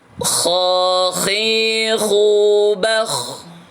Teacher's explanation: Kha khi khu bakh. Ada hamasnya kha, tebal, huruf ini tebal.